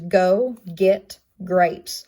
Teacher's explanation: It's a velar placement. It is voiced, and it's in words such as go, get, grapes. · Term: stop consonant